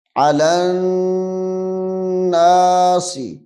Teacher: لام کو نون کے ساتھ ملا کے غنہ کرنا ہے